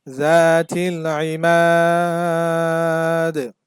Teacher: জজম হয়ে যায় এখানে দালে থামলে দালটা জজম হয়ে যাবে আর দাল যেহেতু কলকলার হরফ আর আমরা জানি কলকলার হরফে যখন জজম হয় তখন কলকলা করতে হয়